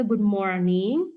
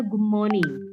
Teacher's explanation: Sedangkan British dia sama sekali tidak membaca R sounds. Makanya kalau orang American itu ngomongnya good morning, tapi kalau orang British itu ngomongnya good morning.